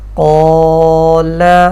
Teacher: الف مدہ کے بعد ساکن حرف آ جائے یا وقف کی وجہ سے ساکن کریں تو الف مدہ کی آواز کو 2 سے 3 سیکنڈ تک لمبا کھینچ کر یعنی مد کر کے ساکن حرف پر رکیں